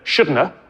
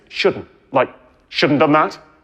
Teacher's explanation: After all, shouldn't have is grammatical in spoken English, as in I shouldn't have done that. Actually, in my dialect, if I'm talking quickly, I pronounce that as either shouldn't have or even just shouldn't, like shouldn't done that.